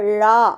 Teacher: சோ அந்த நாக்கின் நுனி அந்த மேல்வாயை அந்த நாக்கு வந்து மடிச்சு அந்த இடத்துல தொடுது வருடுது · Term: ழகரம்